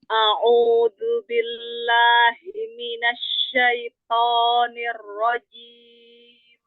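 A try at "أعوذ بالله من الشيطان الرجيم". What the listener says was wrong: O-nya coba jangan langsung lempar keluar ke atas bagian arah depan. Jadi lebih tebal. Syaito, syaito. Jadi enggak syaito. Nah, itu terlalu tipis dia karena dia langsung ke depan.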